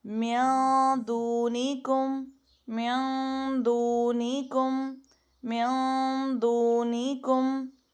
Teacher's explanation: ناک میں ایسا موٹا کر کے غنہ نہیں کرنا، کیونکہ دال حروف مستعلیہ میں نہیں آتا، تو باریک رکھنا ہے غنہ. میوں دونی کم، میوں دونی کم، میوں دونی کم، دو واو مدہ ہے، دونی کم.